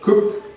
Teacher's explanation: con la pronunciación de la ed como una t